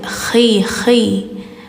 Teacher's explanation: tenggorokan ujung. Ada ngorok dikit.